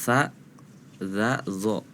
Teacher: tsa itu sebetulnya sama ada tsa dza do itu ininya apa ujung lidahnya bertemu gigi seri atas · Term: huruf tsa